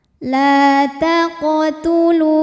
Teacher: Sebab huruf qalqalahnya ini sukunnya asli dan ada di tengah bacaan. Cara membacanya dipantulkan qafnya ini dengan pantulan yang kecil.